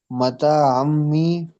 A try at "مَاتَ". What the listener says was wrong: متا نہیں ہے، ماتا ہے، دیکھ کے پڑھیے نا.